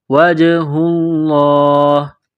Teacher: جیم ساکن ہے تو یہاں پر قلقلہ کریں گے